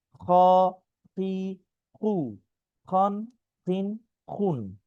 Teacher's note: এই হরফটির নাম খ। খ অল্প টান, কণ্ঠনালীর শেষ ভাগ হতে এটা উচ্চারণ হয়